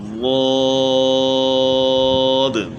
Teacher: زبان کی کروٹ بائیں طرف سے ہم نے ادا کرنا ہے۔ زبان کی کروٹ جب اوپر کی داڑھوں کی جڑ کے ساتھ لگے گی اور اس کے بعد پھر موٹا کرنے کے لیے زبان کو تالو کی طرف اٹھائیں گے، تو یہ اس کا مخرج ہے، ضاد۔